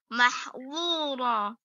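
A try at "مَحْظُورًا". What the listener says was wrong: Mahdzura, mahdzura, kan beda. Bedakan antara yang tipis mahdzu dan yang tebal mahdzu. Jadi dibiasakan lagi antara zu dan zu. Itu harus beda. Jangan sampai semuanya tebal.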